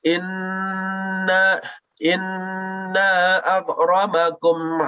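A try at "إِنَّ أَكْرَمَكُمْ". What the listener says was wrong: Baik, dari huruf nun itu tidak dipanjangkan ke huruf hamzah. Langsung. Inna akramakum.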